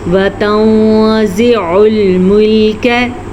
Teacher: نون ساکن کے بعد زا حروف اخفا میں سے ہے تو ہم نے یہاں پہ بھی نون ساکن کو چھپے ہوئے غنے کے ساتھ پڑھا،